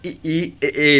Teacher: देखिए जीभ आगे का हिस्सा उठा रहता है, इसीलिए हम कहते हैं अग्रस्वर